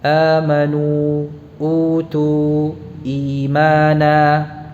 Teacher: Ini keadaan khusus ya dari mad tabi'i. Dan mad badal ini dipanjangkan atau dibaca panjang 2 harakat.